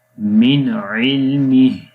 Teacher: تو اس کو پڑھیں گے من علمہ، یعنی نون، یہاں پر نون ساکن ہے، اس کے بعد عین آ گیا تو یہاں اظہار ہوتا ہے، یعنی کہ نون کی آواز کو غننے کے ساتھ نہیں پڑھتے بلکہ ظاہر کر کے پڑھتے ہیں